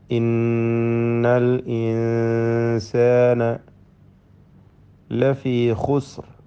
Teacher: ഖാ തഫ്ഖീമിൻ്റെ അക്ഷരമാണ്, ഇസ്തിഅലാഇൻ്റെ ഹർഫുകളിൽപ്പെട്ടതാണ്, പെരുപ്പിച്ചുച്ചരിക്കണം.